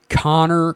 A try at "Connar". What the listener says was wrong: Connar, not Connor. AR.